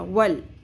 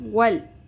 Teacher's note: واو زبر لام ساکن ول، بیچ میں جو آپ کو الف لکھا ہوا نظر آ رہا ہے یہ سائلنٹ ہو جائے گا، لام ساکن واو کی زبر کے ساتھ جڑ جائے گا ول۔ اور ول یہاں پہ قلقلہ نہیں کرنا، اکثر لوگ کرتے ہیں، ول نہیں پڑھنا، ول۔